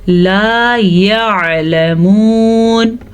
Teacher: عین اگر ہم اس کو واضح نہیں پڑھیں گے تو یہ حمزہ کی آواز میں چلا جائے گا اور لفظ غلط ہو جائے گا۔